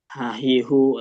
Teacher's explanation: H ini dia pakai tenggorokan bawah dalam arti dia enggak jadi halus seperti H yang di tengah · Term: H besar